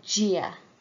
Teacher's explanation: in some areas the Slender D sounds almost like an English J